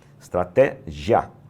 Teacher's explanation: Meu querido e minha querida, essa palavra aí, ela termina, o I termina junto com o A, então é um ditongo. E esse ditongo é um ditongo crescente.